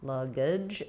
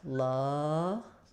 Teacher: So in luggage, letter U says the schwa vowel. Luggage. This is going to be very reduced schwa, and then we have the J sound at the end.